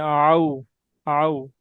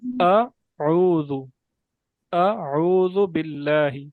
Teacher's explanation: اس میں حمزہ اور عین یہ دو مخارج اکٹھے آ رہے ہیں